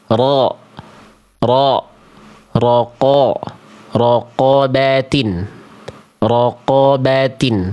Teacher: Ya, mulutnya cukup dibuka, pangkal lidahnya naik. · Huruf tebal itu bisa tebal karena ketika berharakat pangkal lidahnya tetap naik ke atas, lidah dalamnya tetap naik. Sehingga bunyi vokal A yang terdengar seperti vokal o itu sebenarnya vokal A yang gemuk karena pangkal lidahnya naik.